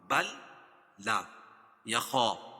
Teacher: خا کو موٹا پڑھیں گے کیونکہ حروف مستعلیہ میں سے ہے